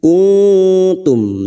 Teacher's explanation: nun sukun bertemu ta Ikfa Hakiki kita samarkan bunyi nun sukun